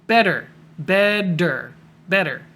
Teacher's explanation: your tongue hits the top, almost makes a D sound · Take that double T, make it a D. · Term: flap T